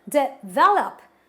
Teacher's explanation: This means that the word has got 3 syllables. And this word requires that I stress on syllable number 2. So I pronounce it as develop, not develop.